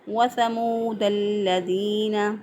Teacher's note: لام ال کے بعد لام جو ہے آ گیا تو یہاں پر ادغام ہو گیا، لام کا لام میں ادغام ہو گیا، اس ادغام کو ادغام شمسی کہتے ہیں۔